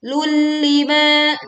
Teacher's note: dhammah tanwin melebur ke lam tanpa disertai dengung